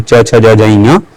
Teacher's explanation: च जो है च वर्ग को जो पांच वर्ण आते हैं च वर्ग आए च ज ञ पांचों का उच्चारण स्थान तालु है